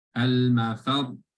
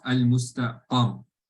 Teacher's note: You're going to add a stress on the letter before, which is the qaf, al-mustaqar.